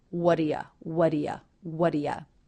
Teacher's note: in the word do, the oo vowel is reduced to the schwa. This is the same as in the word you.